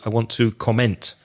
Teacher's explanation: you use the word that the verb to comment but you put the stress on the second syllable